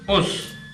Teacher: Us se dice con vocal relajada, no es con vocal tensa.